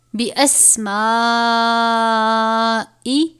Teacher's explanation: مد ہے 5 الف کے برابر، اس کو لمبا کریں گے